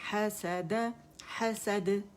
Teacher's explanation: جبڑا کھلے گا یعنی حسد, اور اسے کھینچیں گے نہیں, مد نہیں بنائیں گے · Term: قلقلہ